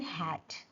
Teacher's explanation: So the sound is produced is produced at the glottis where the vocal cords are partially open. Air passes through the open glottis creating a slight friction. So it is also fricative. · The sound is voiceless. H is voiceless because vocal cords are apart. · H is voiceless glottal fricative. · H is produced at the glottis, where the vocal cords are partially open. · the sound is made at the glottis.